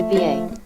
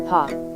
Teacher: in how they are produced for example when you say ba your vocal cords start to vibrate as soon as you begin the sound but when you say po there is a 60 millisecond lag between the time you start the P sound and the time